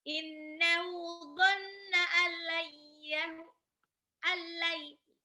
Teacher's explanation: nun sukun langsung lebur ke lam